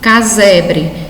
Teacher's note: a palavra é escrita com S, mas soa som de Z